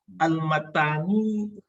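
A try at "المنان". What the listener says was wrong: Bukan matan, manan. Itu bukan tak tuh nun, manan. Ya, manan.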